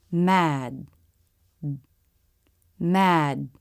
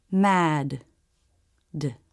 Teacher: We stop the air, but we don't release it. You lift your tongue into position, stop the air, and that's it. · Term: stop D